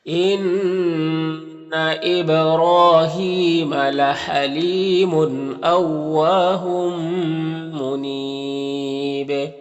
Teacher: نون مشدد غنہ ہوگا، با میں قلقلہ ہوگا، را کو پر پڑھیں گے، کھڑا زبر ہے، ایک الف کے برابر کھینچیں گے۔ · یہاں پر وقف کریں گے تو مد عارض وقفی ہوگا اور با میں قلقلہ ہوگا